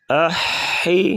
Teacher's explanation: حا کو گلے سے ادا کریں گے